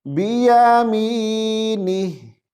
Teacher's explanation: با کے نیچے زیر ہے، اس کو بے مجہول کر کے نہیں پڑھیں گے